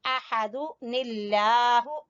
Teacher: احا کو وسط حلق سے، حلق کے درمیان والے حصے سے